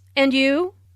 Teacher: Notice the rising intonation on and you.